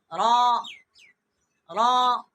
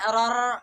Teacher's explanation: 3 دانتوں کے جو اندر والے مسوڑے ہیں ان سے ٹکرائے، زبان کی پشت ٹکرا کے ہٹ جائے، ٹکرائے پھر ہٹ جائے